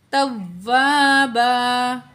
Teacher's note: تا کو واؤ سے ملائیں گے اور واؤ میں سختی کریں گے، واؤ الف زبر وا، تو یہاں بھی الف مد ہے، دو الف کے برابر کھینچ کے پڑھیں گے، توابا.